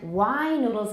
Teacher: wine noodles is even longer than wide noodles because it's an open syllable. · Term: length of the vowel